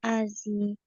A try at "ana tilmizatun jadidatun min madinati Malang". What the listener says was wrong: Nah, ini dibacanya Malang. Ya, bukan Malanji, tapi dibacanya Malang.